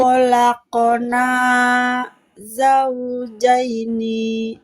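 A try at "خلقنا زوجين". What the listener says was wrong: Kho-nya dudukan di tenggorokan atas. Khalaqona. Kho.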